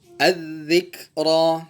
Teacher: ketika dia berharokat fathah, dia ditebalkan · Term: ra tafkhim